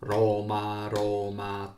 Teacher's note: In both these Italian words, the accent falls on the first syllable.